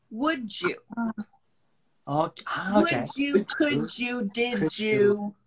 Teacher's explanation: So, and then the D, so the last letter is D and the next word is U. Changes to Jew.